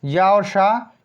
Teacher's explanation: इनको तालु के सहारे बोला जाता है।